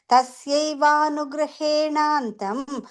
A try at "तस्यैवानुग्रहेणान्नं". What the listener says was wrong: The second line, just before the comma, grahenannam, double na.